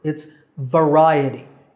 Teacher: how I said that word its variety but right a tea with the stress on the second syllable